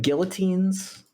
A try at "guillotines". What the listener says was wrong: don't pronounce the L's.